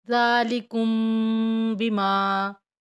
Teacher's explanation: میم ساکن کے بعد با اخفاء شفی ہوگا، غنہ کریں گے